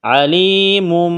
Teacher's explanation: فَإِنَّ اللَّهَ عَلِيمٌ بِالْمُفْسِدِينَ، علیم، یا ساکن سے پہلے زیر ہے، حروف مد آیا ہے، ایک الف کے برابر اس کو کھینچنا ہے، میم کے اوپر دو پیش تنوین ہے، تنوین کے بعد با ہے تو یہاں پر اقلاب کریں گے، یعنی آواز ناک میں چھپائیں گے